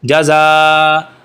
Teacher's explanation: اب یہ مد دیکھیں, یہ ہم نے بتایا تھا کہ الف مدہ کے بعد, حروف مدہ کے بعد اگر حمزہ اسی کلمہ کے اندر ہوگا تو وہاں پر یہ والی مد آئے گی, اس کو کہتے ہیں مد متصل. اس کو 4 الف کے برابر کھینچ کے پڑھیں گے. جزا, حمزہ دو زبر ان, جزا ان.